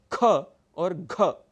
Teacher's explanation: आपकी प्राणवायु शक्ति अधिक लगती है। ख और घ, अगर आप इन्हीं वर्णों को अल्प प्राण में बोलने की कोशिश करेंगे तो आपका वर्ण बदल जाएगा। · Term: महाप्राण